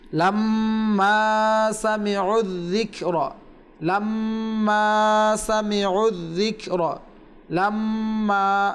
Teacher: আমরা পূর্বে বলেছিলাম যে মিম এবং নুনের উপরে যদি তাসদীদ থাকে তাহলে সেটাকে ওয়াজিব গুন্না বলে, আর ওয়াজিব গুন্না প্রায় কমপক্ষে এক আলিফ পরিমাণ করতে হয়। তো এখানে মিমের উপর তাসদীদ রয়েছে, এক আলিফ গুন্না হবে